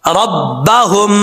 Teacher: भारी साउंड के साथ पढ़ा जाएगा क्योंकि जिस हल्क से ये हा अदा होता है उस हल्क का ताल्लुक सीने की तरफ है, मुंह की तरफ नहीं है